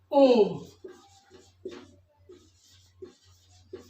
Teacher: जब हम ओम का उच्चारण करते हैं तो उसमें 3 गुना समय लगता है। हमारा नाभि से शुरुआत होकर और हमारे कंठ तक ध्वनि निकलती है, तब हमारा 3 गुना समय लेते हुए ओम का उच्चारण होता है, जो हमारा प्लुत्व में आता है।